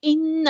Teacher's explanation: نون پہ غنہ زمانی ہو رہا ہے، ایک الف کے برابر رکیں گے. ہا پہ الٹا پیش ہے، تو یہاں پر مد اصلی ہو رہی ہے.